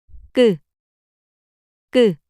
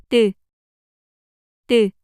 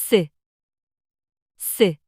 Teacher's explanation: Double consonants are pronounced with more tension in the throat, blocking the airflow.